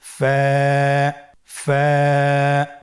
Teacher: স্ক্রিনে দেখতে পাচ্ছেন ফায়ের মাখরাজ। ফায়ের মাখরাজ হলো নিচের ঠোঁটের প্যাড সামনের উপরের দুই দাঁতের আগার সঙ্গে লাগিয়ে উচ্চারিত হয়।